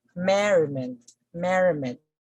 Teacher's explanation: falls on the first syllable mary let me say merriment merriment although we had a suffix meant here the stress still fall on the first syllable